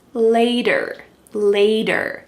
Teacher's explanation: There's a T, but it sounds like a D.